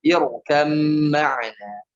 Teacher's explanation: Ada ba di situ. Jadi irkab ma'ana, tapi ba-nya masuk ke huruf mim dengan sempurna